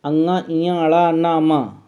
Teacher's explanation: पंचमाक्षर हैं, अंगा, इया, अड़ा, ना, मा, अंगा, इया, अड़ा, ना, मा, इन सभी का उच्चारण स्थान नासिका है।